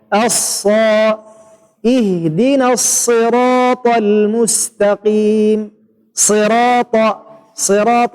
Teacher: اللسان مرتفع من أقصاه ومن أمامه في حالة يخرج الصوت بين الأسنان العليا والأسنان السفلى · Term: الصاد